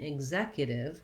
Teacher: We have second syllable stress, and so we see that here with the line before that stress syllable.